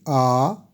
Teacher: दीर्घ स्वर के उच्चारण में दो मात्रा का समय लगता है दीर्घ स्वर के उदाहरण है आ दीर्घ दीर्घ ए ऐ ओ